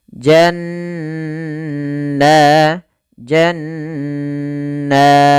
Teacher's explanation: cara membacanya menahan suara nunnya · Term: ghunah